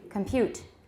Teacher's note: in an unstressed syllable, here it's still a full vowel, not a schwa